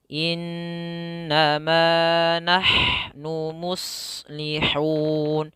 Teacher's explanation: Innama, jangan langsung, jangan innama, tapi tahan dulu 2 harokat an-nya. Innama nahnu muslihun.